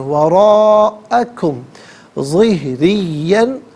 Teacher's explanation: रा के नीचे ज़ेर है, रा को बारीक करके पढ़ेंगे, वफ़ की सूरत में ज़िहरिया पढ़ेंगे, ज़िहरिया।